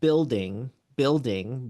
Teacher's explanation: you have a stressed syllable pattern so you have building building which is strong weak strong weak